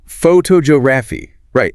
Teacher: The stress shifted entirely to the second syllable. · And the O sound in the first syllable almost disappears. It becomes a weak uh sound.